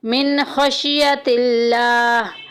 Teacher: لفظ اللہ کا لام باریک پڑھا جائے گا